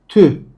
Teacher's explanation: ü ile i sesi arası bir ses. Tü.